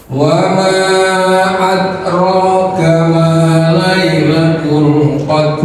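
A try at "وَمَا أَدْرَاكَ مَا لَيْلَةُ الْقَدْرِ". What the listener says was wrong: D-nya keluarin sedikit. Tadi yang pertama tadi, Bapak salahnya tadi adalah ini. Nih, ada panjang di sini ya. Yang ini tadi udah betul ya. Nah, adrokanya tadi jangan terlalu dalam, jangan out gitu, jangan adroka ya.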